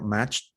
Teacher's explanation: this one is a ch, voiceless. That's why it ends in a t sound.